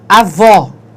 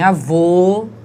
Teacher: Então, em avó, o som é aberto. Entretanto, em avô, o som é fechado